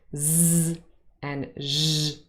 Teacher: You need quite a lot of force here to to produce those sounds, and the vocal cords are really vibrating quite heavily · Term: voiced consonants